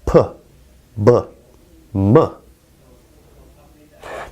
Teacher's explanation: so first we have bilabial sounds just like the term suggests these are sounds that are produced with the two lips